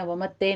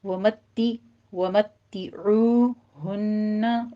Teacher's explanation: ومتعوہن میں بھی تا کے اوپر تشدید ہے، سختی کیجیے اور نیچے کسرہ کی آواز باریک کرنی ہے، ومتے نہیں کہنا، ومتعوہن، عو میں عین وسط حلق سے ادا کرتے ہوئے واو مدہ ادا کرنی ہے۔